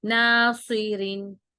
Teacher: اب ناصی، سی صاد کو موٹا پڑھیں گے، اس کو سی نہیں پڑھنا، وہ سین کا مخرج ہو جائے گا، ناصرین، اور را کو ہم باریک پڑھیں گے کیونکہ زیر آ رہی ہے اس کے نیچے، ٹھیک ہے، تو اس کو موٹا نہیں کریں گے، را کو موٹا نہیں کرنا، ناصرین۔